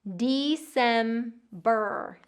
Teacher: Getting that long E, December, and that long R, and that vocalic R at the end